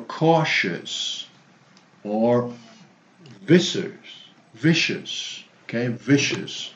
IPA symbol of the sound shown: ə